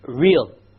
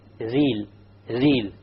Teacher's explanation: The English R comes from the middle of the tongue, and the Arabic ra comes from the tip of the tongue. It is very important that when we pronounce the R in Arabic, the ra in Arabic, we do not roll the tongue.